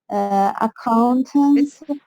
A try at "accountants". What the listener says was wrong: it starts with a schwa. It's not accountant, no. Accountants. Accountants.